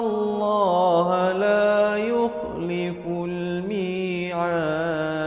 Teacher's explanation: diberikan pantulan kerana dal merupakan huruf qalqalah